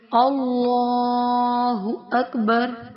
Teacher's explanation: کیا کیا جاتا ہے کہ یہاں پہ زبر ہے اللہ کے لام سے پہلے، اللہ کا لام موٹا پڑھا جائے گا اور کھڑا زبر کو ایک الف کی مقدار کے برابر کھینچ کر پڑھا جائے گا